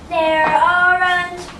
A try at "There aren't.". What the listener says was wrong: Speak clearly. You have to open your mouth a little more. Look at me. There aren't.